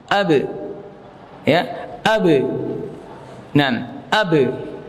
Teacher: Karena dia punya sifat qalqalah maka dipantulkan